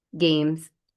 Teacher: that Z sound is different than written S, right? Really remembering to feel your voice when you're saying it